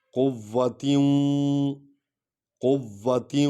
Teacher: فما له من قوت من قوت تے کو وا میں ادھر دیکھ رہے ہیں، وا کو وا میں ملائیں گے کیونکہ وا پر شد ہے